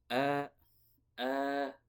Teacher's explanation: yang betul hamzah itu di pangkal tenggorokan